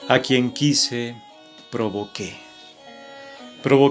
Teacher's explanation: al tener la sílaba tónica su fuerza en la última sílaba de esa palabra genera una sílaba rítmica más por lo tanto aparentemente son siete pero insisto al ser una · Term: palabra aguda